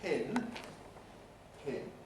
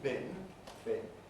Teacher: We know we get aspiration in pin, pin, not in bin, bin